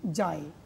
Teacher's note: এখানে কিন্তু এ অর্ধরূপে উচ্চারিত হচ্ছে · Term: অর্ধস্বর